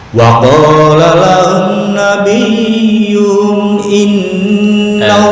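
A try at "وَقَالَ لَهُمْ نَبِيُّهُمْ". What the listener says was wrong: Bukan nabiyuhum itu lama, langsung. Wa qala lahum nabiyyuhum ya.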